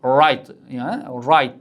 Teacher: Ingliz tilida right deganda tilimiz r harfini aytayotganda biroz bundoq bukiladi, lekin arab tilida unaqa emas.